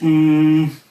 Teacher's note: Icelandic has an unvoiced N or a voiceless n and you can try this you make the n Sound n